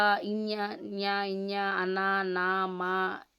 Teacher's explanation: వీటిని మనం అనునాసికాలు అని అంటామండి. అంటే వీటిని ముక్కు సహాయంతో పలుకుతాం మనం.